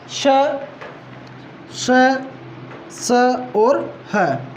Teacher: संघर्षी इसलिए कहते हैं कि प्राणवायु उच्चारण अवयवों के साथ रगड़ करती हुई, संघर्ष करती हुई बाहर निकलती हैं। इसलिए श, श, स और ह को संघर्षी व्यंजन भी कहा जाता है।